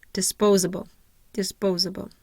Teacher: my primary stress is going to be on the second syllable I have no secondary stress and I have awah in my third syllable and in my